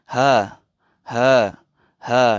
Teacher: Huruf ha. Kita getar sambil hembus nafas. Ada aliran udara, kita lepaskan.